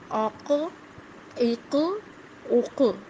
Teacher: اس کی آواز ہل رہی ہے، پلٹ رہی ہے. قاف کی آواز پلٹ کر آ رہی ہے.